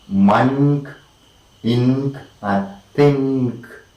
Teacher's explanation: the alveolar n is replaced by the velar n. Alveolar n is replaced by velar in because of the velar k. · replaced by velar n because the next phoneme is velar.